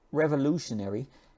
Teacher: this T sound sounds more like sh, okay? And what's also happening is that there's some of these vowels start to sound the same.